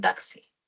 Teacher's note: la secuencia de una oclusiva velar y una fricativa alveolar, KS, por ejemplo en taxi